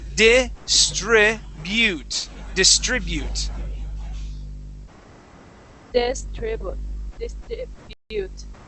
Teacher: the trick with some of the U sounds in English is that we stick a Spanish I in front of that U. So, instead of saying distribute, bu distribute.